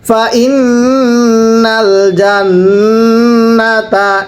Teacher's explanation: এই যে নুনে তাজদিদ অবশ্যই গুন্নাহ করে পড়তে হবে